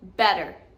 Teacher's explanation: the T sound, when followed by a vowel, will turn into a D.